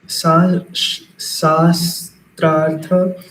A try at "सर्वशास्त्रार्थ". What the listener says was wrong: शास्त्र। सा नहीं जी, सा नहीं है, शाह है, शास्त्र।